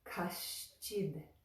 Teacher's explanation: we've got the sh sound in kash. And right after that, we've got the ch sound for chid. Kaścid. So when they go together, it sounds more like kaścid.